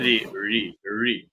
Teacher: ऋ भी मूर्धन्य है, स्वर है